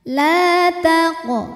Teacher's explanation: cara membacanya dipantulkan qofnya ini dengan pantulan yang kecil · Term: Qalqalah Sugra